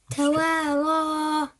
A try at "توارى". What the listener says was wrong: Not too long, yeah? Say توارى.